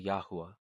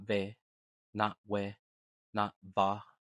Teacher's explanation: That means Yahu flows naturally into ah, not ve, not we, not va. That glide from you to ah is built into the language